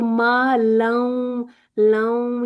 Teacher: لوں یعنی کہ نون کی بھی تھوڑی سی آواز آ رہی ہے